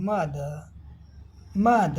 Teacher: British English में final आर का उच्चारण नहीं होता है।